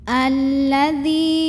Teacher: Alladzi di sini ada hukum mad tabi'i karena ada ya sukun yang didahului baris kasrah. Maka huruf yang berbaris kasrahnya yaitu dzal kita panjangkan dulu 2 harokat.